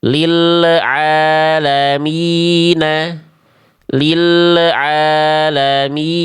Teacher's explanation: Kerasa lam sukunnya ada memantul, ada bunyi le di ujung pelafalan. Terasa gak boleh karena enggak punya sifat qalqalah.